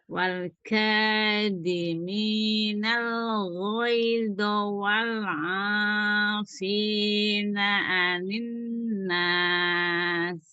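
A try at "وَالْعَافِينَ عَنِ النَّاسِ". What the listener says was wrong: Ya, hati-hati huruf ain. Bawah ya. Wal 'afina 'anin nas. Enggak perlu disenyum. Turun aja lagi.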